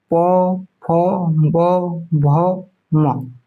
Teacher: प फ भ म ये कहां छू रहा है? ओष्ठ दोनों ओष्ठ छू रहा है। ठीक है? इसीलिए इसको ओष् वर्ण कहा जाता है। · प वर्ग को एक बार बोलिए, देखिए प, फ, ब, भ, म। तो ये कहाँ छू रहा है, ओष्ठ, दोनों ओष्ठ छू रहा है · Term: ओष्ठीय वर्ण